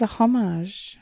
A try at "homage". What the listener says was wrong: It's a silent H.